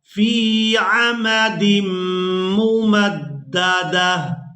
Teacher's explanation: اس ایک آنکھ والی تا کو ہا میں بدل دیں گے اور ساکن ادا کریں گے